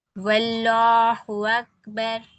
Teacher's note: واللہ پہ بھی واو پہ زبر ہے تو ہم لام کو موٹا پڑھیں گے